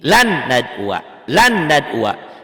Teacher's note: Dibacanya n ini ditahan. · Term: idgham bigunah